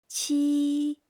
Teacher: like in cheese, but lighter, with air.